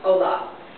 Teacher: For words such as hola, which is actually spelled H-O-L-A, you don't hear the H, it's hola.